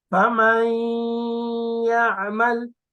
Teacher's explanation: It is read accompanied by a prolonged gunna. Okay, so the sound of nasal sound ends on ya.